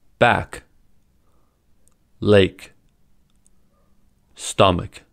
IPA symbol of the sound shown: k